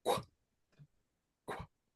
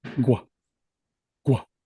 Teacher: this rounded K is a voiceless sound, but the rounded G is voiced